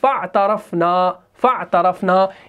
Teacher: ہم اس فا کو اس عین سے ملا رہے ہیں، اس حمزۃ الوصل کو نہیں پڑھتے